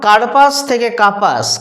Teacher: কার্পাস পয়ে রেপ ছিল মানে র যুক্ত প হয়ে গেছে কাপাস, মাঝখান থেকে র বাদ গেছে। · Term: মধ্য ব্যঞ্জন লোপ